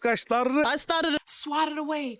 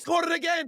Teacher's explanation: they're using a sound not typically associated with English, the alveolar trill, rrr, also called a rolled R, but they're not using it as an R.